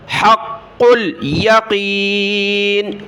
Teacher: ان هذا لهو حق ہا کو قاف کے ساتھ، قاف کو لام کے ساتھ ملایا، قاف کو سخت کیا